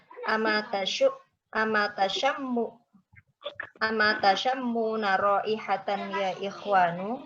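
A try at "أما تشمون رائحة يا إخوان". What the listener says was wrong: Mumtaz, bagus kan.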